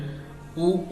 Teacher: ऊ का उच्चारण स्थान ओठ है। क्योंकि आप देखते हैं कि ऊ बोलने पर हमारे होंठ क्या होते हैं? मुड़ते हैं।